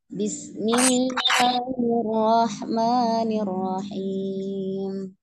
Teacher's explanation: hak bersih dari tengah tenggorokan.